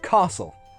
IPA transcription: kɑːsl